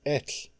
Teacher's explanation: When TL is present at the end of the word, it is unvoiced. The word ends with only the light sound of escaping air.